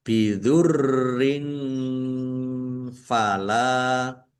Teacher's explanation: Kasroh tanwin bertemu dengan huruf fa, bacaan ikhfa. Dibaca samar-samar.